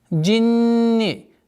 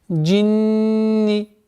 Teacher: Удвоение с буквы нун проявляется назализация в размере 2 огласовок и четкое произношение кесрой.